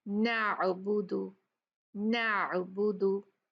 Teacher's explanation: जब आइन को वाज़ेह तौर पर अदा किया जाता है तो एपिग्लोटिस जो होता है बहुत पीछे जाती है, तो नाली जिससे आवाज गुजरती है तंग हो जाती है ना, इससे आवाज में थोड़ी सी रुकावट महसूस होती है। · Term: हर्फ आइन